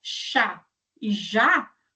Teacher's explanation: Então nós conseguimos perceber que uma parte, ou seja, a língua, esse dorso da língua, se encosta lá no nosso céu da boca, que é esse palato duro. Aí temos o que é chamado de palatal, que vai ser o contato da que eh considerado a parte média da nossa língua com o final do palato duro, ou seja, com o nosso céu da boca. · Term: alvéopalatal